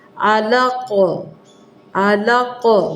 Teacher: قاف کے اوپر جزم پڑ جائے گی تو یہ یہاں پہ قلقلہ ہوگا